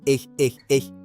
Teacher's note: narrow gap at the back of the throat. Like a whispered K.